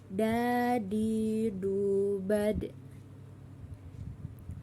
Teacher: Huruf da keluar dengan menyentuhkan ujung lidah kita ke gusi bagian atas. Dalam keadaan mati, huruf da terdengar memantul.